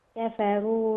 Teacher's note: كفروا الراء مفخمه لانها مضمومه